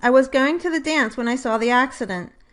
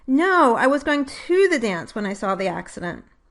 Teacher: the word to would normally be unstressed, and the vowel would be transcribed as schwa.